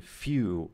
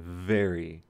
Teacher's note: You have your lower lip touching your top teeth.